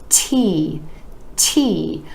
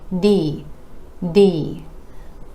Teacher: You want to make sure that there's a tiny puff of air releasing with the T in T, T, or else it might sound more like D, D. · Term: air puff sound